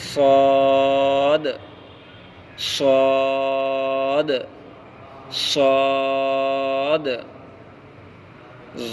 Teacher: صاد کا مخرج زبان کی نوک اور سامنے کے دانتوں کے کنارے سے صاد ادا ہوتا ہے